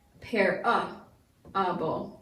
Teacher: That A has been schwa'd, and it takes on a short U sound.